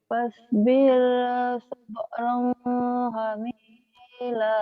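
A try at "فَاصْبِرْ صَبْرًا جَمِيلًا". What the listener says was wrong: Siapa yang hamil? Bukan hamil, Jamil. Fasbir. Fasbir. Fasbir sabran jamila.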